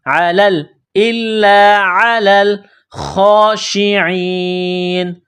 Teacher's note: عین گلے کے درمیان سے عین کو نکالیں گے، لام کو لام کے ساتھ ملانا ہے، پلس کرنا ہے.